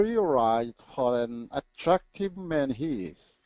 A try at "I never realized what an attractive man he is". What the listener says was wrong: this was your weak one the L was the weak one